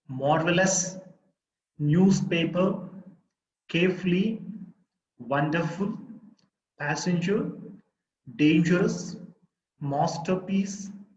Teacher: these are three syllable words but the first syllable is the stress itself